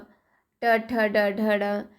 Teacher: क्योंकि ये हमारे जो क है, क हमारे तालु से हम कहते हैं, फिर च है वो जीभ से हम बोलते हैं, ट है वो भी हम मूर्धा, ट को हम मूर्धा से, हमारी जीभ थोड़ी सी टेढ़ी हो जाती है ट बोलते समय